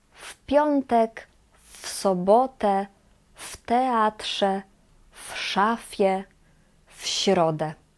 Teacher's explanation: we read w as f. when the next consonant is unvoiced consonant